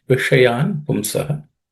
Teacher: the sh in the Vishayan is a cerebral sh, so the tip of the tongue should point towards the roof of the mouth.